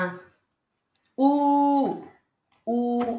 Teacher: again it is rounded, back, close